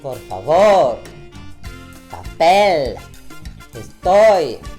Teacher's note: c'est sur la dernière syllabe que tu insistes